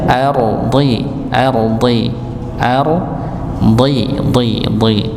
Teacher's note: Nah, ini huruf dal. Kalau huruf dha ditebalkan, ya, walaupun dia dalam keadaan kasrah atau i, maka tetap dibaca tebal